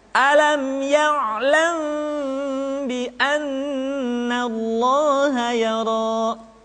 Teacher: Maka pada tahapan ini, mim mati bertemu dengan ba bukan saja mesti ditahan dan dimasukkan ke rongga hidung, akan tetapi mim mati bertemu dengan ba mesti dibaca dengan sempurna. Caranya, kita baca mim dengan suara yang samar. Caranya, kedua bibir kita direnggangkan, tidak sampai rapat secara sempurna. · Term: ikhfa syafawi